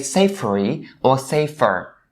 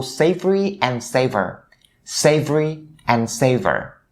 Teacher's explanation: you shouldn't turn the V sound in these words into an F sound and say savory or safer, right?